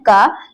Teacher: क का उच्चारण स्थान हमारा कंठ है